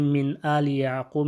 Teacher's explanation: کیونکہ من ساکنہ کے بعد حمزہ آ رہا ہے جو بھی حروف حلقیہ میں سے ہے، تو یہاں پہ اظہار ہوگا